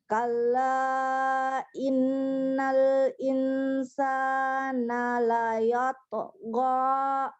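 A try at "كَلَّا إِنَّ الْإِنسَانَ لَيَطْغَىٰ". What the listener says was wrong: go ya, jangan ga ya, mau ga tadi. Kalla innal insana la yatgha.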